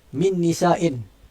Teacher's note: Kita dengung tu, kita dengung nun yang kedua. Jadi nun yang pertama tu telah hilang keseluruhannya.